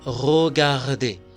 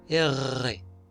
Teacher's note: La R suena G, pero con una vibración